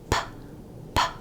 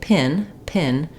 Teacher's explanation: I stop the air completely and then it explodes out so when I say p p the way that sound is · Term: stop sound